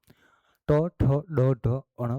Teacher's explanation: મૂર્ધન્ય વ્યંજન ટ ઠ ડ ઢ અણ બોલતી વખતે જીભ મૂડે છે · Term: મૂળધન્ય વ્યંજન